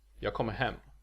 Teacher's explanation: The last word has the sentence emphasis, while the two former words are unstressed and thus blend together.